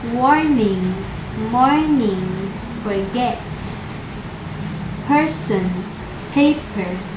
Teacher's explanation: letter r for example the words warning warning forget person paper the vowels in each syllable are all dominated with a consonant r